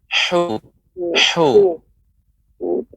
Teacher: huruf ha makhrajnya di tengah dan tenggorokan kita agak lebih sempit